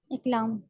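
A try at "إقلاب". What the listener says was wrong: लाम नहीं, लाब। बा,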